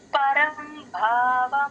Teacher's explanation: పరం భావ భాకి మహాప్రాణం ఉంది ఇందులో గమనించండి